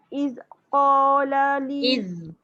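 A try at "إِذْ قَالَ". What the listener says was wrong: Iz Dia bunyi z tu. Jangan beranakkan zal tu.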